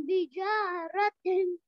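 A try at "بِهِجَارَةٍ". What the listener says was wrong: बिजा नहीं भाई, बा के बाद हा भी है, बाजेर भी, हाजेर ही, बिही। देखिए ये है, ऐसे देखिए यहाँ पर ये बा है, बाजेर बी, और ये उसके नीचे ये हा है, हाजिर ही, बीही।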